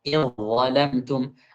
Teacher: Jangan dibaca idh zalamtum, jangan. Di zalnya diubah menjadi dha.